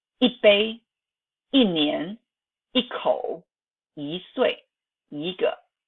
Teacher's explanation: When E is followed by another syllable, it is transformed into the second or fourth tone. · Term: Tone transformation